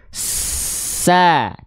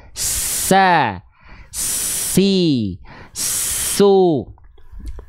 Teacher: huruf Sin punya sifat hams tapi kadar nafasnya mengalir